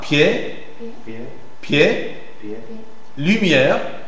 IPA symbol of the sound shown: j